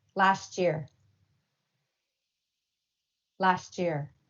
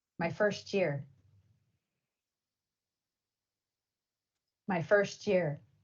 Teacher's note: try to make the CH sound between words